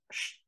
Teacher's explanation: en términos fonológicos es una fricativa posalveolar sorda